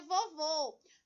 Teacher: Notem que o O, que era pronunciado com o som aberto em vovó, passou a ser O. Passou a ser o som fechado por causa do acento circunflexo. Ele modifica a pronúncia da sílaba, ele modifica o som da palavrinha, ok?